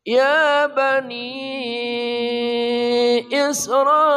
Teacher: mad jaiz munfasil, 4 harokat panjang. Mad tabi'i bertemu dengan hamzah di lain kata.